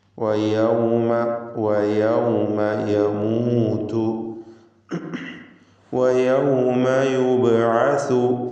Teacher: പിന്നെ വാവ് പ്രത്യേകം സൂക്ഷിക്കണം. വാവ് 2 ചുണ്ടുകളിൽ നിന്ന് ഉച്ചരിക്കണം. വാവിൻ്റെ ഉച്ചാരണ സമയത്ത് ചുണ്ട് വൃത്താകൃതിയിലായിരിക്കും.